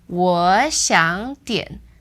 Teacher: That's the first 2 becomes second tone, and the third word stays the third tone.